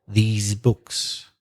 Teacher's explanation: the plural, these books, is a long sound e and with vibration z